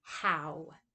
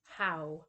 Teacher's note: That ow sound is a diphthong, and it goes from low back to high back. How, you can feel it move, how.